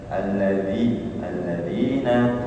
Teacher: pakai gigi seri atas bukan gigi bawah kalau gigi bawah jadi Za